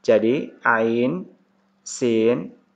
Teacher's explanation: ain ke sin, nunnya dibaca ikhfa, dibaca samar.